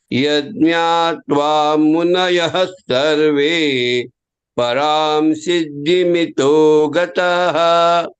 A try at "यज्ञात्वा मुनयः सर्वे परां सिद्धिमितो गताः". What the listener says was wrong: गताः not गतः गताः